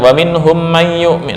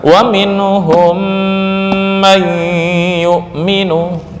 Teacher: Wa minhum may yu'minu amanar rasul wa minhum may, tapi kalau dibaca wa minhum may yu'min, nah, itu berarti dengungnya nggak ada. Yang penting ada kadar dengung lah. Ya, ukuran 2 ketukan.